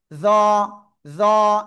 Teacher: জিহ্বার আগা উপরে দুই দাঁতে লাগান, লাগিয়ে উচ্চারণ করতে হবে মোটা আওয়াজে, জ, জ, একালিপ টান, হ্যাঁ, ক্লিয়ার?